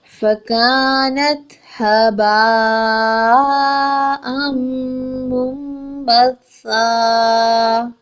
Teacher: با زبر الف با، اس کے اوپر مد بھی ہے، اس کو 4 سے 5 حرکت کھینچ کر پڑھیں گے